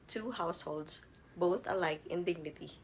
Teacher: a line of verse with five metrical feet each consisting of one short or unstressed syllable followed by one long or stress syllable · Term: iambic parameter